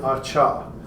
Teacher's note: Over here we have that elongated duration moving right into the vowel. Okay, so we see much more noise in the affricative, and we see a lot longer duration between those.